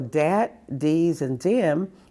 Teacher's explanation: they all used D-E, the D sound, for TH sound, because TH didn't exist in any of those languages.